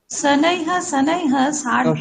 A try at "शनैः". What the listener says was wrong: সানাইহা সানাইহা না, দেখো লিখেছো কিন্তু উচ্চারণটা না, যখন দেখবে বিসর্গের আগে যেই বর্ণটা আছে সেই বর্ণ মতো উচ্চারণ করবে। সানাই হি, সানাইতে লাস্টে ই আসছে, তাহলে হি উচ্চারণ করবে, তাহলে শুনতে, তাহলে এটা কানে লাগছে। হি, হ্যাঁ, যেমন তুমি মুনিহি, তুমি তো মুনিহি বলছো, মুনি হ কি বলছো?